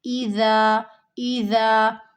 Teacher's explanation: زال جو ہے نرمی سے ادا ہوگا، دونوں دانتوں کے درمیان زبان کی نوک کو رکھتے ہوئے